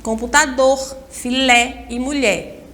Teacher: Todas as três palavras, a última sílaba é a mais forte. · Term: Oxítonas